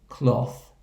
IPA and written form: klɒθ (cloth)